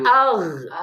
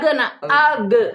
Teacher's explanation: entong dilepas tapi ditahan, ya, gin mah. Agh Mun dilepas jadi agh, agh, agh.